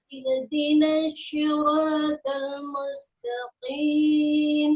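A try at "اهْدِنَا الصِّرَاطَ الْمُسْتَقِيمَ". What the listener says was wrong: Huruf sod. Huruf sod ya. Jangan kita ucapkan seperti huruf shin tapi dibaca tebal. Ihdinashi, nashi. Jangan seperti huruf shin yang dibaca tebal. Ihdinasi, nasi. Jadi bibirnya nggak perlu monyong. Nashi, nashi. Nasi.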